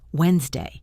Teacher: Notice that the stress never moves from the first syllable. Wednesday. It never becomes Wednesday no matter how you say it.